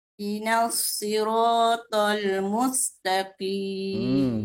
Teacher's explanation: Bagus sifat huruf pada huruf sin dan sad itu ada desiran yang baik.